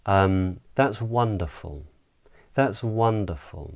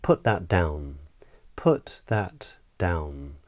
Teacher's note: a falling or downward intonation pattern would simply mean that the pitch of the voice drops down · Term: downward inflection